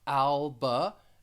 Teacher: the stress is on that first syllable the second syllable has that schwa